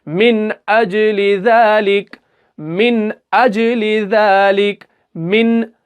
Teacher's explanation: तो नून साकिन के बाद यहाँ पर हमजा आ रहा है तो यहाँ पर हमें क्या करना है, नून को गुन्ना नहीं करना बल्कि बगैर गुन्ना के पढ़ना है, यानी इजहार करना है। तो हम इसको कैसे पढ़ेंगे, मिन अजली ज़ालिक, मिन अजली ज़ालिक, मिन, हम मिन को पूरा अदा कर रहे हैं, हम मिन नहीं, इक्फा की तरह हम नहीं कर रहे हैं, बल्कि कायदा आज इजहार का चल रहा है।